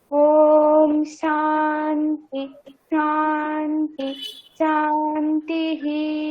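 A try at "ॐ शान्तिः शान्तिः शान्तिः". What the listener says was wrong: এটা কি তালবস্য হয়েছে? হ্যাঁ, আপনি বুঝতে পেরেছেন, দন্তাস্য হয়ে যাচ্ছে। তালবস্য হতে গেলে কি করতে হবে? কোন বর্ণের মধ্যে উচ্চারণ করতে হবে? তালবস্য উচ্চারণ কোন বর্ণের মতো হবে, কে বলতে পারবেন?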